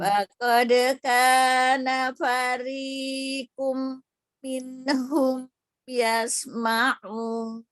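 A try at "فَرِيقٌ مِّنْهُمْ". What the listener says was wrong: Cuman tanwin ketemu mim itu idgham kan? Jadi harusnya dengungnya lebih panjang. Fariqum. minhum.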